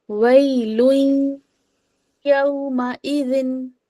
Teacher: وَيْلٌ يَوْمَئِذٍ، لن نہیں پڑھا میں نے نا، وَيْلٌ نہیں پڑھا میں نے وَيْلٌ کر دیا. ٹھیک ہے، یا اور تنوین کو میں نے ادغام کر دیا